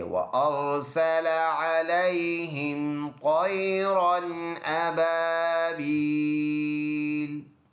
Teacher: یہ را پر ادا کرنے والا ہے کیونکہ اس کے اوپر زبر ہے